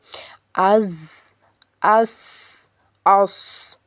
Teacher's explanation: مخرج نمبر 14 ہے زبان کی نوک سے جب اوپر نیچے کے اگلے دونوں دانت آپس میں ملیں، اس سے ز سین صاد۔ صفیریہ کہتے ہیں عربی میں سیٹی کو، تو اسی لیے اس میں سیٹی پائی جاتی ہے ان تینوں میں، ز سختی والا ہے اور ز سین صاد۔ · زبان کی نوک جب اوپر نیچے کے اگلے دونوں دانت آپس میں ملیں تب یہ ادا ہوتا ہے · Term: حروف صفیریہ